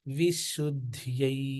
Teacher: విశుద్ధ్యై అన్నప్పుడు మీరు దంత్య సకారం చెప్తున్నారు. దంత్య సకారం చెప్పకూడదు. తాళవ్య షకారం.